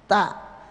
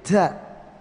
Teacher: Ada sifat hamas keluar desis, tapi juga ada sifat syiddah kuat. Ta, jadi enggak menjadi da, mustaqim enggak, ta ya.